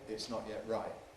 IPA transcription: ɪʔs ˈnɒʔ jeʔ ˈraɪʔ